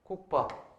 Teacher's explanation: 안울림 예사소리랑 안울림 예사소리가 만나서 뒤에 있는 안울림 예사소리가 된소리가 되는 거죠.